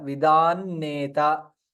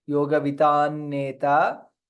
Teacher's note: Since Anuswara followed by Nakara, Vidan Neta. Yoga Vidan Neta, na will be doubled.